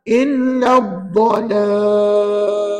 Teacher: Jadi huruf alif pada illa tu jangan pakai. Sebenarnya dalam ayat ini huruf alif jangan guna, huruf hamzah wasal jangan guna, dan huruf lam selepasnya juga tidak dibaca. Jadi yang kita baca terus kepada huruf dad yang bersabdu. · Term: Syamsiah